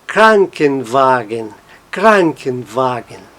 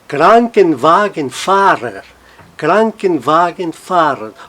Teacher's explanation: as duas palavras que estão compondo a nova palavra mantêm a sua sílaba tônica mas a primeira fica um pouquinho mais forte, Krankenwagen, Krankenwagen.